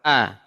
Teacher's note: Hamzah dari tenggorokan paling bawah pangkal tenggorokan